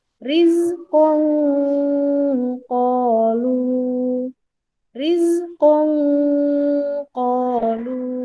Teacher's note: Cara membacanya adalah nanti setelah kita membaca nun sukun, lidah kita itu membentuk posisi masuk ke huruf to. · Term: ikhfa hakiki